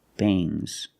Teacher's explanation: there's a little G but it's not bang it's softer